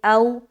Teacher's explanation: واو ساکن سے پہلے زبر ہے تو واو لین کا قاعدہ ہے، نرمی کے ساتھ جلد ادا کریں گے، ٹھیک ہے. اور معروف کا خیال بھی رکھنا ہے تو یہاں پر ہم پڑھیں گے او.